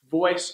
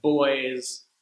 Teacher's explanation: the V sound is often pronounced like a B because there is no V sound in Spanish voice often sounds